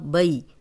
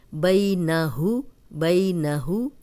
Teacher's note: جزم والی یا پیچھے زبر ہے، یہ یائے لین ہے، اس کو لمبا ہونے سے بچائیں گے